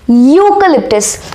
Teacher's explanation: it starts with the vowel E but the pronunciation belongs to the consonant Y